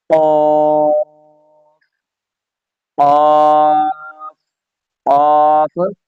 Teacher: اس letter کو موٹا کرنا ہے، اس میں زبان کی جو جڑ ہے اس کو تالوں کی طرف اٹھا دینا ہوتا ہے، وہ لیٹر خود بخود موٹا ہو جاتا ہے